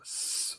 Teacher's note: It's a sibilant. This letter represents the S sound, which is, linguistically speaking, an unvoiced sibilant.